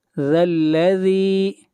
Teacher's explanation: ذال کو بھی کھینچ کر پڑھیں گے ایک الف کے برابر، اس لیے کہ یہاں پر یا مدہ ہے